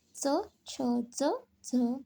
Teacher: च वर्ग च, छ, ज, झ तालु के स्पर्श से तालव्य